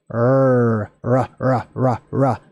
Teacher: I say it with more of a rolling of the tongue, but it's a R sound.